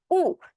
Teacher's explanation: উ যখন বলতেছি তখন আমার জিভের পেছনের দিকের অংশটা যেটা, সেটা কিছুটা উঁচু হচ্ছে। যেহেতু পিছনের দিকের অংশটা উঁচু হচ্ছে, এর জন্য এটা হচ্ছে পশ্চাৎধ্বনি।